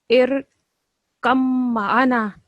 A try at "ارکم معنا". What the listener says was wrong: نا کے آگے ہے الف، اس کو میرا ادا پلیز کریں ذرا.